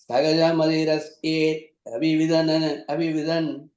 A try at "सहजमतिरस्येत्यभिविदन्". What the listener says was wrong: The third line, the last word, mati rasyetya, ya sound has to come. Mati rasyetya bhividan. Abhividan vara because madi rasyeti abhividan. The T and A becomes kya then.